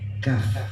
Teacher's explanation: Kemudian ada juga huruf kaf, itu pangkal lidah